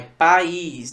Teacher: Veja que entre o A e o I rola um hiato, beleza? E nesse hiato, um dos elementos do hiato é a sílaba tônica.